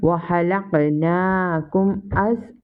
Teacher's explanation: After mim sakina, here comes hamza and here is izhar shafi. We will read without gunna. Wa halaqnakum as waw alif zabar wa alif madda we stretch equal to 1 second.